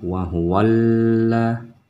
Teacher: Ini masuk dalam kategori alif lam syamsiyah. Jadi alif lamnya tidak dibaca, tetapi karena memang di sini adalah huruf lam, jadi wa-nya langsung menyambung ke lamnya, jadi suaranya wa huwalla.